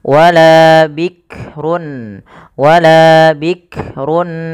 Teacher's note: maka pfal wala ada Mad thi'i fathah bertemu Alif bikrun ya hati-hati dalam melafalkan huruf Kaf tidak langsung bikrun Bik jangan sampai memantulkan huruf Kaf karena Kaf tidak punya sifat Qalqalah